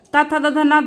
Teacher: र और ष ये आ जाते हैं के मुर्धन व्यंजन में फिर आ जाता है आपका दंत व्यंजन पूरा त वर्ग · फिर आ जाता है आपका दंत व्यंजन, पूरा ता वर्ग आपका ता था द ध ना दंत व्यंजन में आ जाता है।